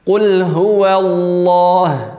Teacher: huwa tipis, la-nya tebal.